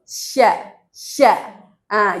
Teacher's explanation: Jadi sa yang benar sa terus sya. Jadi tengah lidahnya naik ke langit-langit.